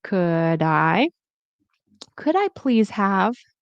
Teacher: And very important, the L. We do not pronounce the L.